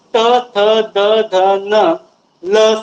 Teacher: Pure दाताला स्पर्श करून उच्चार होतो म्हणून ते दंत्य आहे.